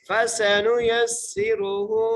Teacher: وَصَدَّقَ بِالْحُسْنَى فَسَنُيَسِّرُهُ، فَسَنُ، فا کے اوپر زبر ہے، سین کو سیٹی سے ادا کریں گے. فَسَنُ، یا کو سین سے ملائیں گے اور سین کو سیٹی سے ادا کریں گے، را کو موٹا کر کے پڑھیں گے اور ہا کے اوپر الٹا پیش، ہا کو ایک مقدار کھینچ کے پڑھیں گے.